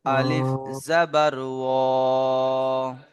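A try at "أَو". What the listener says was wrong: আমার সোনা ভাই টান হচ্ছে না, টানটি হচ্ছে না, জি টান দিতে হবে। ও আলিফ জাবার ও টান বলতে, জি শোনেন, টান বলতে কি বোঝায় বলেন তো? টান বলতে কি বুঝতে পাচ্ছেন?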